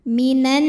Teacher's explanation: karena ada alif lam yang di hadapannya huruf Syamsiah yaitu Nun cara membacanya alif lam tidak dibaca atau kita masukkan langsung ke Nun Oleh karena itu alif lam syamsiyah juga disebut dengan Idgham syamsyi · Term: alif lam syamsiah